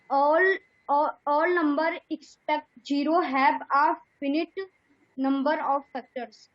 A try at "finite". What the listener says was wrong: ये फिनिट नहीं है, फाइनाइट है। क्या है? फाइनाइट। जैसे इनफाइनाइट बोलते हैं, इनफाइनाइट के आगे आई एन नहीं लगा, इन नहीं लगा है, बात खत्म।